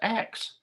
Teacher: the word ask was pronounced ax